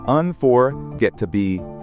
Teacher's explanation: stress on the third syllable